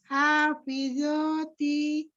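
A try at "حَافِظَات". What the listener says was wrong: Hafidhati. Tidak zo, tapi dho. Ujung lidahnya ada di ujung seri atas. Hafidhati.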